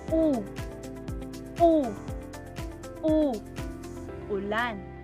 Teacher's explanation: ang bahagi ng dila ay sa likod. Samantalang mataas naman ang posisyon ng dila.